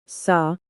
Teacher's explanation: It is a fortis consonant pronounced firmly and distinctly by placing the tongue against the gum.